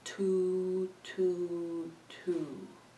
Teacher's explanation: Where is your tongue when you say two? It's touching the back of your top teeth.